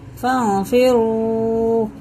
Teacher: فانفروا، یہ اخفا ہے، نون ساکن کے بعد فا رہا ہے تو اخفا ہے